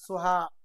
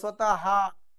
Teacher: विसर्गाचा उच्चार करताना ह युक्त हवा जोरात बाहेर फेकली जाते